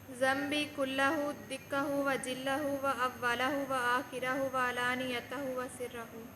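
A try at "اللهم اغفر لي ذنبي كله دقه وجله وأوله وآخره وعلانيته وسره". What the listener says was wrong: माशाअल्लाह।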